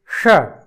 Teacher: जिसका उच्चारण हम मूर्धा से करते हैं, इसलिए इसको मूर्धन्य शकार कहते हैं